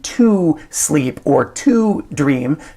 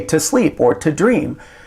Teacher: we've taken that long O sound and we've shortened it to the schwa sound